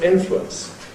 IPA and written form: ˈɪnflwəns (influence)